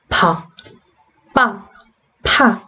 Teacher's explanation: 입술 두 개가 딱 붙었다가 그 막힌 게 터지면서 소리가 납니다. 네, 그래서 얘네가 파열음의 입술 위치에서 나는 애들이라는 거예요.